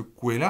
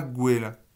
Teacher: toutes les consonnes sourdes qui sont en début de racine sont passées à sonores avec l'ajout du suffixe, de l'affixe, pas suffixe d'ailleurs, non, du préfixe plutôt, objet de première personne.